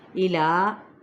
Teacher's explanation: کھڑا زبر ہے، ایک الف کے برابر کھینچیں گے